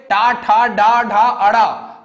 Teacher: इनके उच्चारण में जीभ को कठोर तालु के पिछले भाग में स्थित मूर्धा का स्पर्श करना पड़ता है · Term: मूर्धन्य ध्वनि